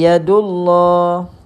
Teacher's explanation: baca dengan tebal sebab sebelumnya baris dammah